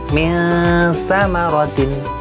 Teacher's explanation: Cara membacanya adalah samar antara bacaan izhar dan idgham. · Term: ikhfa